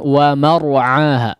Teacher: Jangan ikut mor, jangan ikut menebal mimnya.